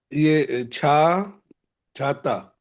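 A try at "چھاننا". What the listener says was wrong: नहीं नहीं, ता नहीं है। छा आपने एकदम ठीक पढ़ा, तो दोबारा उस लास्ट वाले जो दो लेटर तीन लेटर हैं उनको पढ़िए। अब इसमें पहला नून गुना है, फिर नून है, फिर अलिफ है। तो छ हो गया, छ के बाद अलिफ है, छा। छानना, छानना। अब यहाँ पे छाता होता तो वो दोनों नुक्ते एक साथ होते, ऊपर नीचे करके गैप दे के ना होते।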